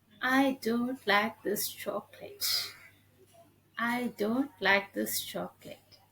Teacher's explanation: i didn't raise my voice here i just go with a flatter tone